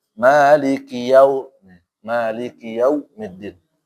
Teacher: di sini maliki pakai u ya, jadi nggak ada o.